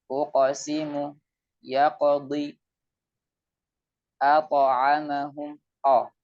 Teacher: Adapun huruf tebal, yaitu huruf qaf dan huruf ta, maka suaranya dekat dengan suara o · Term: qalqalah